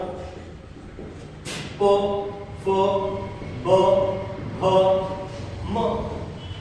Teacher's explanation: होठ के ऊपर होठ लग रहा है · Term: ओष्ठ्य वर्ण